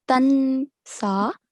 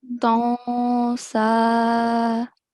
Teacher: the noon sound is coming from the nose and it's not obvious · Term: nasal sound